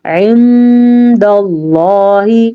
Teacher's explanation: عند اللہ، عند اللہ، عین نون ساکن ہے، اور نون ساکن کے بعد والا حرف دال ہے جو کہ حروف اخفاء میں سے ہے، تو ہم نے پھر نون کو چھپا کے پڑھا عند اللہ، لفظ اللہ کو ہم پر پڑھیں گے کیونکہ لفظ اللہ سے پیچھے والے حرف پہ زبر ہے، ٹھیک ہو گیا۔